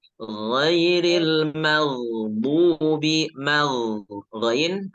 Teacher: Alirkan suara ghain. Karena ghain itu memiliki sifat rokhawah ya, mengalir suaranya.